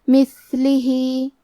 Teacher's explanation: کلمت مثلہ میں ثا ہے اور ثا کی ادائیگی زبان کے سر اور اوپر والے دانتوں کے اندرونی کناروں سے ہے. کیونکہ یہاں ثا ساکن ہے تو ہمیں ثا کو ہمزے سے پڑھنا ہے.